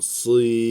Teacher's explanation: sat harfi kalın olduğu için si demiyoruz. Yani si demiyorum.